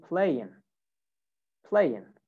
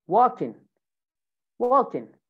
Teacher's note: rp in normal or formal english accent they pronounce the g but in american accent most of the times they don't say the g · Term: ing pronunciation